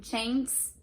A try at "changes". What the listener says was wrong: Change is like almost like 2 syllables. You're saying change. So it sounds like one word.